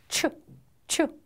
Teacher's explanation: 브르 르바 이렇게 그다음에 후치 조음 보겠습니다 뒷 잇몸 소리예요 그래서 윗니에 바로 위에 있는 잇몸에서 조금 뒤로 가서 나는 소리예요